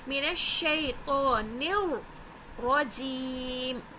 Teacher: مینش، مینش، شی، شی، شے تو نہیں پڑھنا ہے، اگر آپ نے شے پڑھا غلط، شی، مینش شیطانر، شیطانر، نون کو را سے ملاتے ہوئے را کو موٹا کرنا ہے کیونکہ را کے اوپر زبر ہے، دوسرے اس کو سختی سے تھوڑا سا پڑھنا ہے کیونکہ تشدید ہے